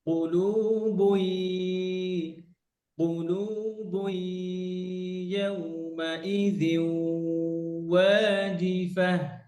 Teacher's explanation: কলু বই, তানবিনের পর, কুলুবুন ভাই তানবিনের পরে ইয়া আছে, তো আমরা জানি ইয়া হচ্ছে ইদগাম উইথ গুন্না।